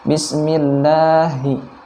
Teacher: lafaz Allah di sana juga dibaca tipis, kemudian dipanjangkan 2 harokat.